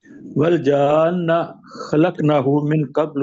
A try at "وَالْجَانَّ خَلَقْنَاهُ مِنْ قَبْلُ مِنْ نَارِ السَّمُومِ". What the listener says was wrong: تھوڑا سا اس کو نا لمبا کر کے پڑھیں. والجان، اس طریقے سے.